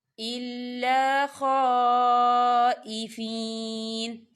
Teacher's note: خالی الف سے پہلے زبر ہے اور اس کے اوپر جو ہے مد ہے، تو اسے 4 حرکت کے برابر کھینچ کے پڑھا جائے گا.